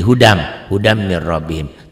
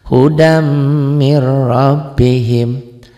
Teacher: dibacanya bunyi n-nya hilang tuh. Bunyi n-nya hilang. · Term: idgham bi gunnah